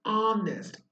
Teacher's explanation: Now, when you say honest, actually, your sound vocal coming out is honest. Oh, the sound of O is coming out, and the sound of H is silent.